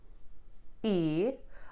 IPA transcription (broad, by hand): e